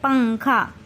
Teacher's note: اس کا اگزامپل ہے پنکھا، جیسا کہ پنکھا کے اسپیلنگ ہے پے نون کاف ہے الف، لیکن اس میں نون کی آواز کو ناک میں چھپاتے ہیں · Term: اخفا